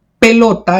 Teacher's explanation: pelota es una palabra grave lleva la mayor fuerza de voz en la penúltima sílaba